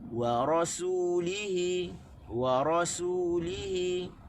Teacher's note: Waw tak tekan, tekan di ra dan tekan di ha. Barulah kita akan dengar dan rasulnya, 3 kalimah. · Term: tekanan suara